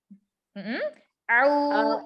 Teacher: sempurnakan domahnya dengan memajukan bibir.